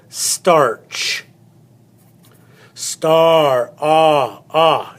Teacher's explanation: start with starch star ah ah it's got the ah sound you'll notice that the a and the r are actually one sound